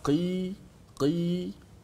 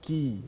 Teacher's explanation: Kalau qaf di pangkal lidah, qi, kaf, ki di depan sedikit.